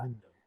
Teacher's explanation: And in our analysis, we wouldn't say that the second syllable of window is stressed. They've both got full vowels in them. Undoubtedly, there's no reduced vowel there.